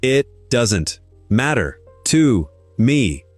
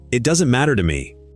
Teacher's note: Beats on matter and me. And there's a flap in the middle of matter, which we should mention.